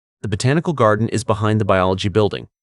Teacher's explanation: Use a falling intonation on the final word building to signal the end of the statement.